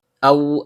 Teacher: Dimulai dengan hamzah dalam bentuk alif atau hamzah qat yang berasal dari tenggorokan bagian bawah. Karena hamzah qat' memiliki fathah yang diikuti oleh sukun waw yang keluar dari bibir , maka terjadilah pembacaan lin.